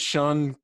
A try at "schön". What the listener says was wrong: Schön. Go higher with your Shun.